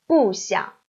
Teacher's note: So, of course, character 不 still keeps its original tone as fourth tone.